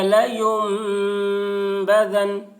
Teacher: بھی نہ کھینچیں، اور نون کے اوپر تشدید ہے، اس لیے نون کی آواز کو ناک میں لے جا کر ایک الف کی مقدار کھینچیں گے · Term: غنہ